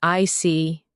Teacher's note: When you show understanding with I see, your tone drops slightly to show calmness